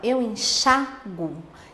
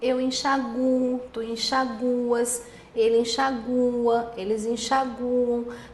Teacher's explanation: Se você pronunciar assim, com a sílaba tônica recaindo no U, aí ele não é acentuado.